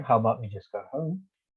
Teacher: you can make a suggestion by a rising tone